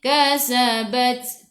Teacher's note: ta sifat hurufnya hamas kena ada sedikit sahaja angin, jangan banyak